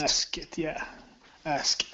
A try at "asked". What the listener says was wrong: Okay, go straight to a T sound. Take out the K, and it's asked, asked.